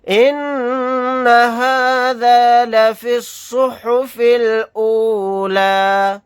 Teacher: نون کے اوپر تشدید ہے تو یہاں پر غنہ کر کے پڑھیں گے